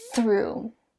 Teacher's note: it's the unvoiced one, which means that you don't vibrate your vocal cords. Instead, your tongue starts in between your teeth, and you push air through them. And then your tongue slides back through your teeth into your mouth.